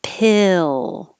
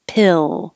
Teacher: this tongue stays almost flat until it goes up for the l pill and then hold it there in the l position a